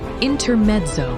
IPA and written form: ɪntəˈmɛtsəʊ (INTERMEZZO)